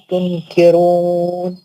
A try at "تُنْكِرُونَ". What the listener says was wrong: نا زبان نہیں لگے گی. زبان نہیں لگے گی. اخفا ہوگا. تنکرون.